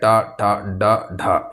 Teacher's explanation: मूर्धा से ट वर्ग का उच्चारण होता है। ट, ट, ड, ढ ये सभी मूर्धा से उच्चारण होने वाला व्यंजन है।